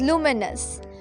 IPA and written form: ˈluː.mɪ.nəs (Luminous)